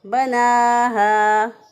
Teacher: नून खड़ी ज़बर ना है, एक अलिफ के बराबर यहाँ पर भी लंबा करेंगे